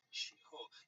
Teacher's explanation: the first syllable is shi, and the tone is rising